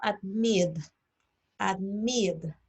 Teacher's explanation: en el verbo admit, admit, el acento tónico está en mid